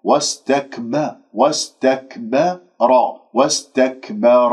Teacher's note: الراء مفخم لماذا؟ لأنها مفتوحة، الباء مرققة مستفلة